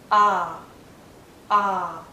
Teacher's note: repeat cup love the does the next vowel sound is ah this is a very long vowel sound it's much longer than uh